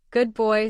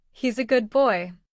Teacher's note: For instance, good boy sounds more like gub boy. The D blends into a B. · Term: Assimilation